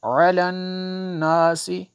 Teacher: یہاں پہ نون میں شدت ہے، یہاں پہ غنہ ہوگا